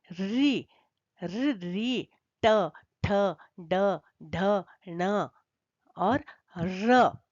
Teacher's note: इनके उच्चारण स्थान मूर्धा है इसलिए इनको कहते हैं मूर्धन्य वर्ण